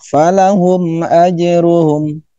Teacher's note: huruf m-nya tidak ditahan, dilepas saja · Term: izhar syafawi